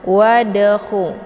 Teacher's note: Kemudian wadakhu, di sini ada dal sukun yang terdapat di pertengahan kalimat, maka ini dinamakan dengan qalqalaf sughra. Cara bacanya dalnya dipantulkan secara pantulan ringan